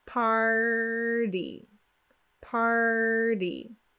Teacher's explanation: So what we need to do is we need to get the tongue tense on the back molars, the tongue tip curled back for the R, and then we're going to quickly hit the roof of the mouth as we bring our tongue back to a resting position · The quick D sound that we do in American English in place of the letter T, that quick D sound may actually sound to you like an R.